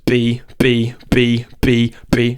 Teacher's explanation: instead so you go and you just force it out with more air with more pressure and smack your lips more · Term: b bass drum